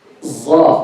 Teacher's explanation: So the sad in Arabic can be pronounced as za.